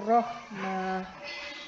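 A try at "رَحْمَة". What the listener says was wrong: Rahmata dulu. Ya, rahmata. Huruf terakhirnya berubah jadi Ya, jadi yang diperhatikan di situ hak sakinah sudah betul, cuman di situ tidak ada huruf mad jadi tidak perlu dipanjangkan. Ya, ini memang biasanya yang banyak terjadi kesalahan di situ. Karena mungkin biasa memanjangkan huruf ketika waqaf. Nah, biasanya huruf terakhirnya juga meskipun nggak ada mat, ketarik biasanya. Nah, coba diperbaiki nafsihir rahmah.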